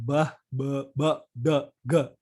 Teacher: Ba, da, ga. Ba itu bilabial, da itu di laminopalatal ya. Jadi di lidah dengan langit-langit keras gitu. Dan gah. Itu ya cenderung di tenggorokan.